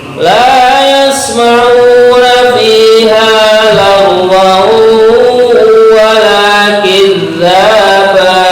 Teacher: لا يسمعون فيها لغوا kita perlu memperhatikan ya, ada bacaan yang namanya idgham bi gunnah. Itu ada tanwin berjumpa dengan wawu.